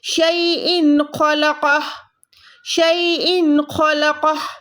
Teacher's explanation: تو تنوین کے بعد بھی اگر خو آئے گا تو ہم اس تنوین کو شو کریں گے، ظاہر کریں گے، کیسے، یہاں پر گننا یا کھینچیں گے نہیں، اس کو نارمل رکھیں گے